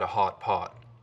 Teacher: one thing you hear a lot up here is a lip-rounded vowel